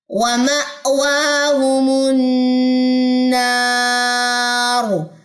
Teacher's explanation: نون مشد کا یہاں پہ غنہ ہے